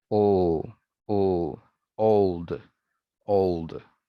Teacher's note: Like, how old are you? It comes after a vowel, o, and then you have the dark L.